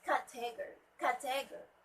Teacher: The stress should be at the first syllable.